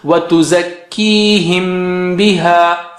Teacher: the way to say it is you keep the lips together and then separate them with the sound of ba. So here it is وَتُزَكِّيهِمْ بِهَا, and do it with ghunna.